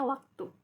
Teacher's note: Lambang fonetis W kecil, bunyi semivokal bilabial atau dorsovelar bersuara